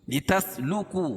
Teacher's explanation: واو ساکن سے پہلے پیش ہو تو واو مدہ، اس کو ایک الف کے برابر کھینچ کے پڑھیں گے